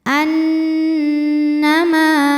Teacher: Annama, ma hukumnya adalah mad tabi'i zahiri. Sebab ada alif didahului harokat fathah, maka huruf mim panjangkan 2 harokat · bunyinya n tapi tahan sampai ada suara masuk hidung. Annama, ma hukumnya adalah mad tabi'i zahiri. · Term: ghunah musyaddadah, gunnah musyaddadah